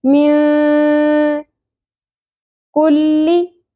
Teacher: بعد کاف ہے، کاف حروف اخفا میں سے، یہاں اس لیے نون ساکن کی آواز کو ہم چھپا لیں گے، اخفا ہوگا مع الغنہ، غنہ بھی کرنا ہے، کھینچنا بھی آواز کو ، من کلی کاف باریک ہوگا، قوف کی طرح نہیں پڑھنا،